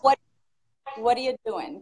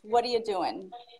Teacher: the reduction and linking of what are you in American English